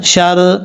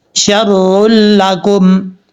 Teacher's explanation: ادغام تو ہوگا لیکن یہاں پہ غنہ نہیں کریں گے